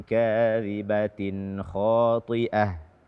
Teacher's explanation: Hukumnya adalah izhar halqi. Nun sukun atau tanwin setelahnya kha, maka nun sukun dan tanwin ini dibaca dengan jelas tanpa ditambah dengan dengung.